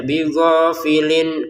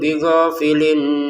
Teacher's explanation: ada tanwin bertemu ain kita baca dengan jelas ya, bighafilin ya.